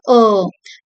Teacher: O is a long mid-back vowel. The tongue is positioned in the middle of the mouth but further back and the lips are rounded. இது சொல்றப்போ கொஞ்சம் middle of the mouthல இருக்கு, கொஞ்சம் பின்பக்கமாவும் middle.